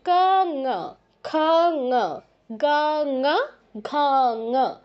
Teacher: ক বলতে যেখানে টাচ করছেন, ঙ বলতে একই জায়গায় টাচ করবে। জাস্ট টাচ করে সাউন্ডটা ভিন্ন বের করতে হবে।